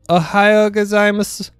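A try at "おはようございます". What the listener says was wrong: It's mas. You don't pronounce the U.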